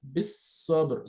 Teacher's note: you're not pronouncing this alif al-wasli, you're not pronouncing this lam al-shamsiyya, because idgham lam al-shamsiyya